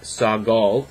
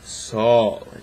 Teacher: it basically makes that g silent and extends the length of the vowel preceding it so s-a-g-o-l it's not sagal it's sol just a long a